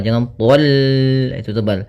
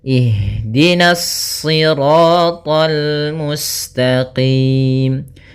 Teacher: Kemudian hati-hati meskipun to-nya termasuk huruf isti' dan huruf ibtbaq sehingga dia menebal surat to-nya, akan tetapi karena kita bertemu dengan huruf lam maka dia lamnya tipis, jangan ikut tebal